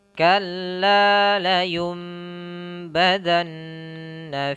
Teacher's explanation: Maka nanti suara nunnya ini bukan lagi layun bada, tapi nunnya diganti dengan mim. Suara n-nya, suara n diganti m, ya, diganti dengan m. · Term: iqlab, iklab